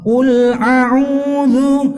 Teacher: Nah, ini sering menjadi permasalahan ya di antara umumnya para pelajar yang masih pemula, di mana banyak sekali ketika membaca hamzah kemudian di situ huruf selanjutnya ain, itu kadang sering kali hamzahnya mirip dengan ain.